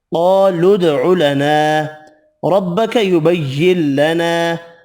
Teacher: را زبر کی وجہ سے پر پڑھیں گے، یہاں بھی ادغام بلا غنہ ہوگا، الف مدہ ایک الف کی مقدار میں کھینچ کر پڑھیں گے۔